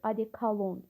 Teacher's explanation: Adekolon sözündə o ilk iki o saiti a saitinə çevrilir. Adekalon bu şəkildə olur.